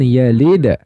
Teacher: jadi dalnya dipantulkan tetap dipantulkan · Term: Qalqalah Sugra